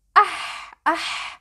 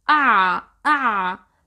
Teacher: ha is voiceless while عين is voiced. When you say ah ah, you can feel the air flowing through your mouth, but when you say ah ah, there is no air.